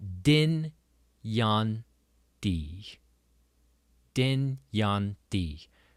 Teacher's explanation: the J in the middle of it is pronounced like a Y, the ya sound